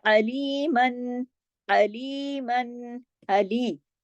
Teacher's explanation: आइन को गले से पढ़ेंगे, हरफे हल्की है, अलिफ की तरह नहीं